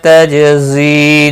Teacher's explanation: جیم ساکن پر قلقلہ ہوگا۔